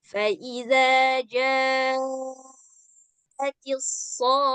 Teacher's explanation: Dipanjangkan dulu 6 harkat, baru dimasukkan ke tasydidnya, agak ditekan sedikit karena ada tasydid di sini. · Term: mad lazim musaqqal kalimi